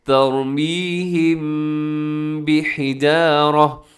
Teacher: اخفاء ہوگا، مطلب اپنے آواز کو ناک میں لے کے جانا ہے، غنے کے ساتھ اخفاء ہوگا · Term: اخفاء شفوی